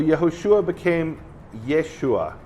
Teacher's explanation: the Jews in the Galilee didn't pronounce the H sound